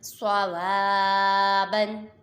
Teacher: الف مدہ کو ایک الف یعنی دو حرکات کے برابر کھینچ کر پڑھیں گے